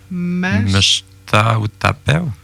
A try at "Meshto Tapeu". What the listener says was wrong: À cause de l'écriture, là, on met un A, Meshta ou Tapeu. En le disant, c'est Meshto Tapeu.